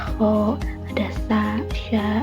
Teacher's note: udaranya keluar dengan gesekan ringan gitu di rongga mulut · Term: bunyi geseran